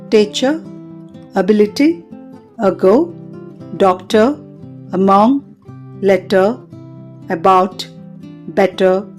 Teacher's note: ధ్వని vocal tract యొక్క మధ్య భాగంలో వ్యక్తీకరించబడుతుంది పెదాలు పాక్షికంగా తెరవబడి ఉంటాయి